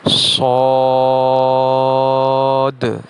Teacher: صاد اور ضاد کی ادائیگی میں چونکہ الف مدہ ہے اس لیے انہیں کھینچ کے پڑھا جائے گا